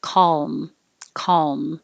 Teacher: my k in the back of my throat calm and then keep making the l noise as you close your lips for the m calm calm so it doesn't have to be a perfect l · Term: dark l, dark L